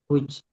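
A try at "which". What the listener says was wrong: উইচ মানে এইচটা উচ্চারণে আসবে না, উইচ। উইচ। আসবে না, না, না, না। উইচ।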